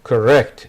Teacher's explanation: The stress is on the second part.